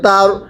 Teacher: র সাকিনের পূর্বে জবর হলে র সাকিন মোটা করে পড়তে হয়